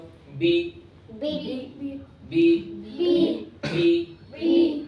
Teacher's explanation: तो बा, मीम और वाव का मखरज हो गया होठ।